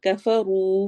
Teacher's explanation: रॉ मोटा और थोड़ा सा लंबा होगा।